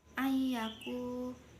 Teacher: ini bacaan idgham bi ghunah sebab nun sukun bertemu ya